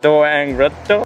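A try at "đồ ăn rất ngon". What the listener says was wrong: You're saying it like very flat. So do ang rat to.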